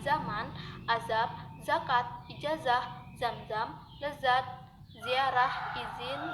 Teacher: Konsonan Z dilafalkan dengan cara mula-mula menempatkan ujung lidah pada gigi atas, lalu udara dihembuskan keluar secara bergeser.